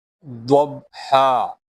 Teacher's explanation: While reading dod, the side of the tongue will touch the molar, upper molar.